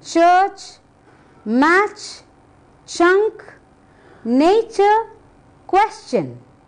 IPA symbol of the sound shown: tʃ